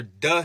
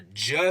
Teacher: a d or du sound is really us stopping and releasing the air and the J or J sound is stopping releasing and then continuing